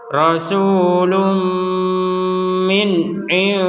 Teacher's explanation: Kemudian ada nun sukun bertemu dal, kita baca samar.